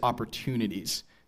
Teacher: she keeps a very distinctive West Coast fronted pronunciation